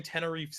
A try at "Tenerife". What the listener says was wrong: Tenerife. It's called Tenerife. No, you pronounce the F. You just stop pronouncing letters eventually in that word.